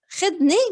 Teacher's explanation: The ذا in Lebanese is often pronounced as a da, just in case you're wondering.